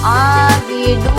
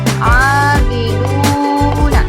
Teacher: Kita hukumi sebagai mad tabi'i. Mad tabi'i ini dibacanya panjang 2 harokat.